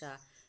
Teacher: इसे हम तालव्य शा कहते हैं, जिसे आप शेर वाला शा कहते हैं। उसका उच्चारण स्थान जो है वो तालव्य है यानी कि तालु है